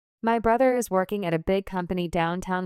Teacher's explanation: The stressed words are brother working big company and downtown. · My brother is working at a big company downtown with stress on brother working big company and downtown. Notice how my is at and a flow quickly and do not interrupt the rhythm. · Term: stress pattern